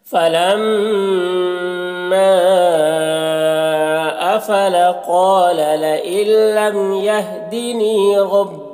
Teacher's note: लइल्लम यहाँ पर नून साकिन के बाद लाम है हुरूफ यरमलून में से, तो नून को लाम से मिलाकर बगैर गुन्ना के पढ़ेंगे, इसको इदगाम ताम कहते हैं। लम की मीम में इज़हार शफ़वी हो रहा है, इसे जल्द पढ़ना।